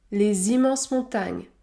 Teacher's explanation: dans ce cas le S se prononce Z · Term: liaison